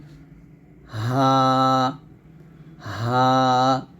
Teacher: এই হা টা আমরা কন্ঠের শুরু থেকে উচ্চারণ করব